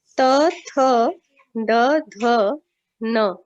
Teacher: जिभेचा स्पर्श कुठे होतो? आपल्या दातांना होत असतो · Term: दंतव्य